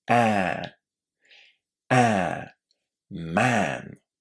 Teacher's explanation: it's a really open vowel sound. This means that we really need to open our mouth when we say it.